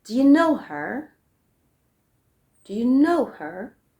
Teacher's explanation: take note of how my voice rises on the last stressed syllable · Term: rising intonation